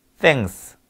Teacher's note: 자, 이거 땡큐 할 때 thanks. 혀를 물면서 땡 하지 않습니까? 그 소리가 이게 치음, 치간음이에요